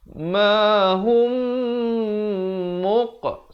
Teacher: Mim mati bertemu mim. Wajib dengung 2 harakat. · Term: idgham mislain saghir